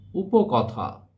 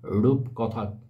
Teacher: যেমন দেখো, উপকথা, এই উপকথা থেকে এসেছে রূপকথা শব্দটি। উপকথায় এখানে কিন্তু র ছিল না শুরুতে, কিন্তু রূপকথায় শুরুতে একটা র ব্যঞ্জনধ্বনির আগম ঘটেছে।